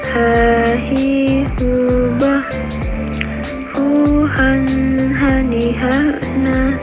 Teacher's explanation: Selanjutnya huruf h, keluar dari tenggorokan yang terjauh.